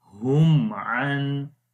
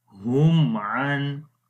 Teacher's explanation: the clear sound of Meem is coming. We are not making gunna or anything else, right? So that's why just keep in mind, if Meem Sakin is followed by Ba, at that time we hide the sound of Meem Sakin.